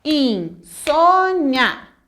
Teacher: A penúltima sílaba é a tônica e ela tem que ser acentuada. Termina em ditongo oral e ela é uma paroxítona e tem que ser acentuada. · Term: sílaba tônica